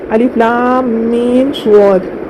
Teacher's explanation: میم ساکن کے بعد میم آ رہا ہے تو اس کو غنے کے ساتھ ملا کر پڑھنا ہے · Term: ادغام شفوی